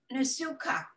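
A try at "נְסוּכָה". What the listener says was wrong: Nusucha. So there's no dot in there. Nusucha. Very close.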